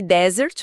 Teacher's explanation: Se você colocar a força na primeira sílaba, a sua voz desce, fica grave. E se jogar pra segunda sílaba, o tom sobe. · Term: tônica